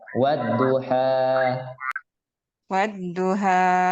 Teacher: ketika di ujungnya masih ada hamzahnya Jadi seolaholah ada Hamzah sukun